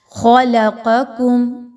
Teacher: خا اور قاف کی وجہ سے درمیان میں جو لام آ رہی ہے وہ موٹی نہیں ہونی چاہیے · فرسٹ والی جو ڈاٹس کے ساتھ قاف ہے اس کو ہم نے باریک نہیں پڑھنا، موٹا پڑھنا ہے، اور سیکنڈ والی کو بالکل بھی موٹا نہیں کرنا فرسٹ والی کی وجہ سے، بلکہ باریک ہی رہنے دینا ہے۔